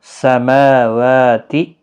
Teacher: ما الف مدہ ہے، ایک الف کی مقدار کے برابر کھینچیں گے۔ میم اور واو دونوں کے اوپر کھڑی حرکات یعنی کھڑا زبر ہے، ایک ایک الف کی مقدار کے برابر کھینچنا ہوگا یا 2 سیکنڈ کے برابر۔